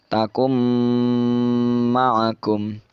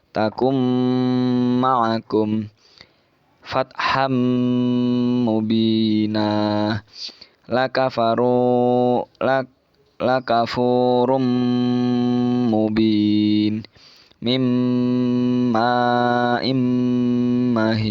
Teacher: untuk nunnya tidak dibaca ya, jadi langsung masuk ke huruf depannya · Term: idgham bi gunnah